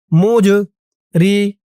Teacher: জমটা কলকলার হরফ ধাক্কা দিয়ে পড়তে হবে